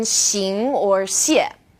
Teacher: this sound is somewhere in the middle of SH and S